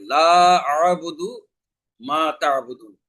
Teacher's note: এখানে লা মানে হলো না, আ'বুদু আমি ইবাদত করি, মা তা'বুদুন তোমরা যার ইবাদত করো। তাহলে এখানে লাতে তিন আলিফ পরিমাণ মাত করে টানতে হবে